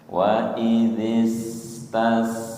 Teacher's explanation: Waidis sin sukun. Ketika sukun ya sifatnya rahwah tetap ada suaranya.